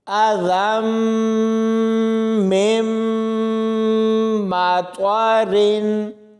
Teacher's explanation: ساکن حرف کے بعد شد ہے، یعنی میم کے اوپر شد ہے، تو ہم نے اس نون ساکن کو نہیں پڑھنا۔ اس میم کو اس میم کے ساتھ ملاتے ہوئے پڑھیں گے، اس نون کو نہیں پڑھا جائے گا۔ · اور جب ذال کو میم کے ساتھ ملائیں گے تو یہاں پر بھی غنہ کریں گے، میم کو میم کے ساتھ ملائیں گے تو یہاں پر بھی غنہ کر کے پڑھا جائے گا